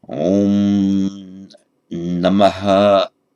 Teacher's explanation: You've got the vowel, then the visarga, then what we write as the subdotted H, and then after that subdotted H is an echo of the preceding vowel. And sometimes in chanting, that echo of the vowel can be quite long.